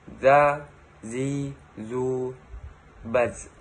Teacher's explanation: Melafalkan huruf za dikeluarkan dengan ujung lisan hampir dengan 2 gigi seri bagian bawah. Diucapkan dengan mengalir suara tanpa diiringi dengan udara.